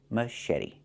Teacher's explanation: The t makes a fast d.